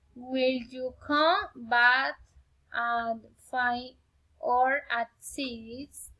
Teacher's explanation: Alternative question. Rising and falling intonation.